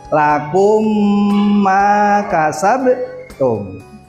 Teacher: karena ada huruf mim mati bertemu dengan huruf mim cara membacanya dibaca dengung dua harokat